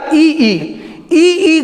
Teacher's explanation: ये ध्वनि हमारे मुंह के अंदर तालु से निकलती है, तो इसलिए इसका उच्चारण स्थान क्या हो गया, तालु हो गया।